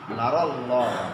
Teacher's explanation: নুনের উপরে কি খাড়া জবর আছে? অনেকে এই আয়াত পড়তে নারাল্লাহ না করে টান দেয়, নাতে টান হবে না